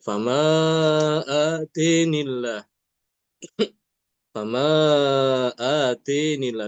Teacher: Karena sebelum lafaz jalalah itu harakatnya kasrah sehingga lafaz jalalahnya dibaca dengan tarqiq dibaca tipis